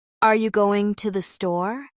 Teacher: Here the pitch rises at the end to signal that it's a question.